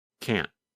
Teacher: The N sound, n, n, n, lasts longer than in the negative form. In fact, in the negative form, because the tongue and voice stop, there is almost no sound of the letter N